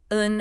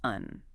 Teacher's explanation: You use un for yes and un for no. That first one is like a short nasal confirmation. The second has more of a rising falling intonation, kind of like in English, but softer.